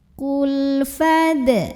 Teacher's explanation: Cirinya adalah lam sukunnya ini menghadapi huruf yang bukan lam lagi ya, bukan huruf lam, juga bukan huruf ro ya. Maka lam sukun ini kita baca dengan idhar atau jelas. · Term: lam mutlak